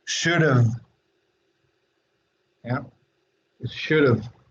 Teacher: porque es el sonido de la V labiodental, pero pues si batallan un poquito para hacer ese sonido, pues pueden hacer el de la F.